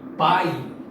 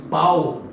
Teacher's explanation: Nós estamos falando de ditongos orais quando todo o som expelido pelo seu aparelho fonador para pronunciar aquele fonema sai pela boca, completamente pela boca, como por exemplo em pai, né?